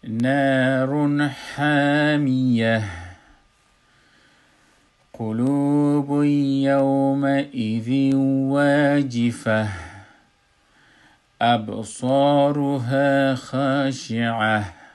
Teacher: نار حامیه، قلوب یوم ایذی واجفه، ابصارها خاشعه، که خاشعه تن نشتشته وقتی که ما وقف میکنیم میشه خاشعه، و واجفه تن نشتشده و وقتی که ما وقف میکنیم میشه واجفه، همی تای مربوطه به ها تبدیل میشه